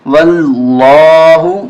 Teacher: واو لام زبر ول، لام کھڑا زبر لا، ہا پیش ہو، واللہ موٹا کریں گے اس لیے کہ پہلے زبر ہے